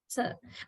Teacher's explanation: you don't completely touch the alveolar ridge with the tip of the tongue, but your tip of the tongue goes closer to the alveolar ridge